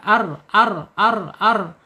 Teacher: Ujung tepi lidahnya menyentuh langit-langit yang ada di depan ya, di atas huruf nun. Kemudian secara sifatnya pertama ada di tawas ya, antara tertahannya suara dan mengalir suara di tengah-tengah bainiah dia. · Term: ro